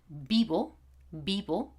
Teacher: V and B are pronounced exactly in the same way